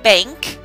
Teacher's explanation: it also has the N that makes the NG sound